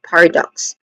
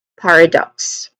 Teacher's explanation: When it comes to pronunciation, paradox, there's three distinct sounds starting with par which has a short a vowel sound and this is also the stressed sound or stressed syllable here. And then next to that is awa sound, a short weak and stressed a vowel sound.